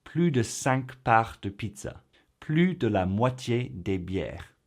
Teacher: if plus is used with a number or expresses a quantity or proportion, then we combine it with de but do not pronounce the s